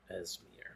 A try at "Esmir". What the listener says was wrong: No, Esmir. There's two Z's in it. It's important that you say them both.